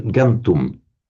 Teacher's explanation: the M before a T will automatically become an N. So that gives it, which is regular gantum.